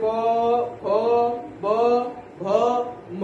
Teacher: ओठ से पवर यानी प फ ब भ म का उच्चारण स्थान होता है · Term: ओष्ठ